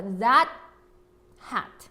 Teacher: 자, that 혼자 읽을 때는 that까지 T 소리 냈는데요. 뒤에 hat 붙여서 읽으실 때는 뒤에 자음이 있으면 우리 T 소리는 받침 처리 트까지 내지 않고 까지만 내기로 했어요. 그래서 that hat 하시면 되겠습니다.